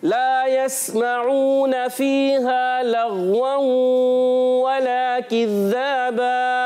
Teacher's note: लाम को गैन से मिलाना है और गैन में कलकला नहीं करना